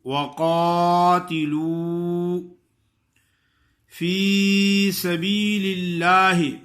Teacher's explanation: وقاتلوا، قاف الف قا ہے، قاف کو موٹا کرنا ہے اور آگے وہ مدہ ہے